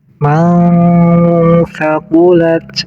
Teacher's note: Fa'amma man thaqulat. Di sini nun sukun bertemu dengan sa namanya ikhfa. Cara bacanya harus disamarkan nun sukunnya.